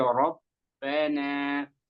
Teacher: I kemudian di ee ba tasdid ya rabbana jangan rabbana tapi rabbana. Jadi ditekan lagi di bnya ba tasdid ya. Rabbana jangan rabbana terlalu ringan.